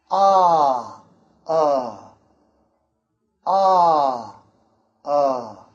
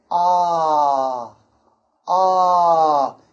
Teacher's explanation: the longer one ah ah like dark is made with a wider mouth ah ah ah so this one is a wider mouth ah